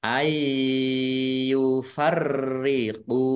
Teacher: nun sukun bertemu dengan huruf ya bacaan Idgham bighhunah masuk dengan mendengung